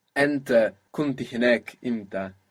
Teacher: The helping vowel is a little bit softer, less emphatic.